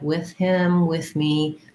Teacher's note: you noted that with can be pronounced with the voiceless th